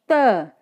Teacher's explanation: देखिए बोलकर देखिए आप, त। त जो आपकी जीभ है वो ऊपरी दांतों से टच हो रही है, तो ये दंत्य हो गया